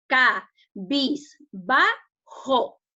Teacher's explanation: La mayor fuerza de voz se encuentra en ba